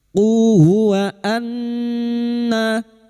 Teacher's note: nun yang bertasdid gunna musyaddadah kita dengungan selama 3 harokat. Wa anna lil kafirina, lil lam ta'rif yang bertemu kaf idhar qamariyah, lil kafirina.